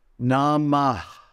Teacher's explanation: Notice at the end, there's a silent aspiration. See, this is called visarga.